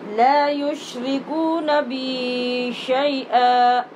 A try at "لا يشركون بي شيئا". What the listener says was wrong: را کو ٹھیک نہیں پڑھتے آپ لا يشركون بي شيئا